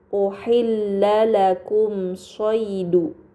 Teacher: Pada kata uhilla lakum shidu terdapat mim sukun bertemu dengan huruf shad. ini dinamakan izhar syafawi maka mim sukun dibaca secara jelas